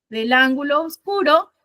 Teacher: Entonces yo tengo esto, ángulo y obscuro. Ángulo termina con O, obscuro comienza con O. Entonces yo ahí me veo obligado por la licencia de Sinalefa a tener que unir del ángulo oscuro. Esto forma una sola sílaba.